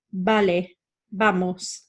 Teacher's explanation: In Spanish, it's more of a pursed lip sound, so it's vale, vamos, a bit more like that, you'll see, okay?